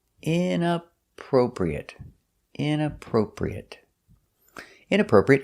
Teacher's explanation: Stress is on the inappropriate, the first and third syllable.